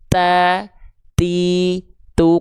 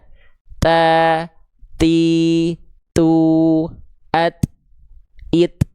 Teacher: Dia punya sifat hams. Hamsnya mengalir nafas tapi bukan kadar mengalir nafasnya. Cukup hanya percikan-percikan nafas saja. Ya, jadi ada percikan nafasnya.